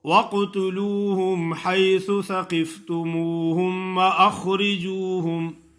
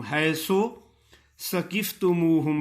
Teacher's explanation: اکثر لوگ سا سے سین پڑھتے ہیں، حیث ثقفتموہم، حیث ثقفتموہم پڑھتے ہیں، لیکن سین کا مخرج اور سا کا مخرج جدا جدا ہے. سا کا مخرج ہے اوپر والے دانت ثنایا یعنی سامنے والے، ان کے نوکوں پہ زبان کی نوک لگائیں تو سا ادا ہوتا ہے